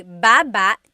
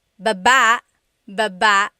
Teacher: Emphasis is on the first syllable.